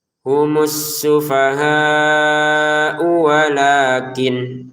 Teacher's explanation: Humus sufaha walak. U-nya ini dibaca panjang salah ya. Pendek saja ke wawunya.